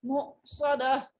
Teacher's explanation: حمزہ جب ساکن ہوتا ہے تو اس کو جھٹکا دیا جاتا ہے, جھٹکا کے پڑھا جاتا ہے